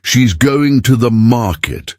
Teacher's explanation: Notice how market has the stress on the first syllable.